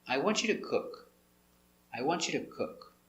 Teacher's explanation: So the intonation goes down at the end for a positive statement, an affirmative statement.